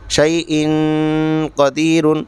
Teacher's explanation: نون کی آواز کو ناک میں چھپا کر پڑھیں گے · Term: اخفا